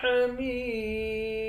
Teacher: میم کو یا کے ساتھ ملا کر یا کو ایک الف کے مقدار کھینچ کر پڑھیں گے، آخر میں میم ساکن ہے